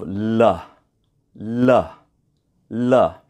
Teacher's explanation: the tip of the tongue moves to just behind the top teeth it touches the top teeth it's that movement of the tongue that makes the L Sound